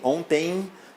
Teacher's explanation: O pessoal até brincou na hora da prova, disse que tampou o nariz, ou tapou o nariz para ver se saía mesmo a corrente de ar, e é isso mesmo. Ontem, aqui nós temos um ditongo nasal, vale lembrar que aqui você vai ouvir o som de E e o som de I, né? Os dois nasais em, ontem, então EM no final da palavra normalmente é o que acontece no português, é a sonorização em ditongo nasal.